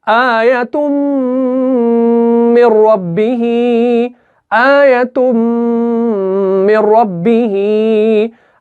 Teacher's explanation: यहां पर तनवीन के बाद मीम मुशद्दद आ रहा है, तो यहां पर क्या होगा, यहां पर इदगाम होगा, गुन्ना के साथ होगा। गुन्ना के साथ क्यों होगा, क्योंकि 4 हुरूफ जो है या मीम नून वाव, इनमें गुन्ना के साथ ही इदगाम होता है।